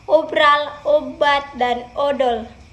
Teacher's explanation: pada vokal O, bibir dimajukan sedikit dan bentuknya agak bundar